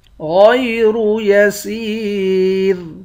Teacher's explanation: سین کو یا کے ساتھ ملا کر یا کو بھی ایک الف کے مقدار کھینچیں گے، یا حروف مدہ ہے۔ آخر میں را ساکن ہے، اس را کو باریک پڑھیں گے۔ · غین اور را ان دونوں حرف کو موٹا پڑھیں گے۔